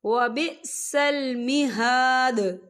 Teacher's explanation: إِلَى جَهَنَّمَ وَبِئْسَ الْمِہَادُ، یا دیکھیں یہاں پر آیت جو ہے ختم ہو رہی ہے، تو یہاں پر وقف ہوگا، وقف کی صورت میں دال جو ہے ساکن ہو جائے گا اور اس پر قلقلہ ہوگا۔